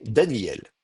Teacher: c'est très souvent ce qui se passe, on appelle ça un amuissement du Aleph. Le Aleph a tendance à s'amuer, et donc effectivement, on va avoir tendance à dire non pas Daniel, mais Daniel.